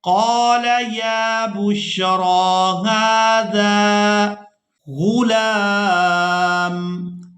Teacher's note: اب یہاں پر ہم نے یا کو ادا نہیں کرنا، اس وجہ سے کہ اس پر کوئی حرکت نہیں ہے۔ را کو ہم نے کھڑی زبر کی وجہ سے کھینچ کر ادا کرنا ہے۔